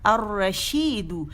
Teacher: شمسی لیٹر آ گیا، اور لام کو اس نے اپنے مرج کر دیا ، الرشید، دو کر کے لمبا نہیں کریں گے، ٹھیک ہے،